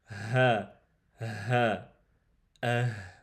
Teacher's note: Le ha sort du fond de la gorge, tout en bas.